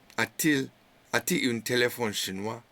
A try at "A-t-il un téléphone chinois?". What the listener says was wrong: Très bien.